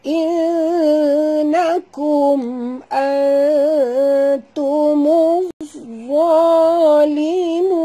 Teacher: Innakum nun bertasydid. Wajib dengung dua harakat.